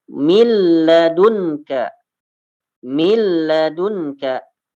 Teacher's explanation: Kalau min itu jelas dimasukkan ke lam jadi milla.